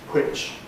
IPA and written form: hwɪʧ (which)